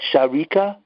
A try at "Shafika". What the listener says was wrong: No, it's with an F. With an F. Shafika.